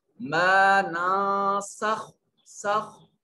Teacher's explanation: تو سین حروف اخفا میں سے ہے، لہذا نون کو اپنے مخرج میں چھپا کر پڑھیں گے